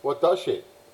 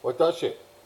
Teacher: it will start low will stay middle and then will go high on the shi · they have a pitch accent going up on the shi